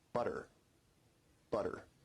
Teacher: your tongue is producing a tap sound there rather than a full stop or plosive sound.